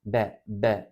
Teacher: ikinci harfimiz ba ya da b dudaklarımızın dışıyla be B bu şekilde söyleriz